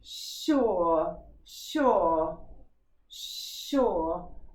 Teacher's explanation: It's making a sh sound in sure, isn't it? It's not even making a s sound